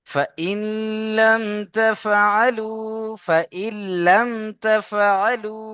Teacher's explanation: এখানে নুন সাকিনকে গুণনা করা যাবে না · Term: ইদগামে তাম